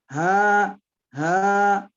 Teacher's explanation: Makhrajnya ha ada di pangkal tenggorokan